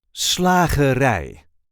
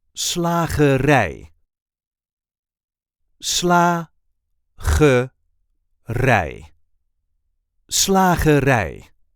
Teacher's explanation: The emphasis is now on the last syllable.